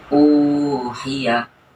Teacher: Maka cara membacanya seperti mad tabi'i atau 2 ketukan, 2 harokat, 1 alif. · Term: mad badal